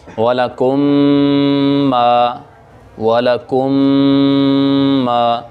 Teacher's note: اب یہ والا کم کی میم کو ہم ما کی میم کے ساتھ ملائیں گے اور ساتھ غنہ بھی کریں گے، والا کم ما والا کم ما، ہونٹوں کی نرمی کے ساتھ دونوں ہونٹوں کو ملانے سے۔